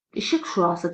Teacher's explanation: İşıq şüası burda hamısı kar samitdən ibarət olur.